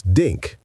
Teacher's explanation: many Spanish speakers from Latin America don't have that TH sound at all. So you replace it with a D sound. This becomes this, and think becomes dink.